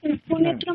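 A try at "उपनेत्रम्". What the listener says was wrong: উপনেত্রাকে দীর্ঘ করুন, নে বলেছিলাম এখানে দীর্ঘ মাত্রা, উপনেত্রম।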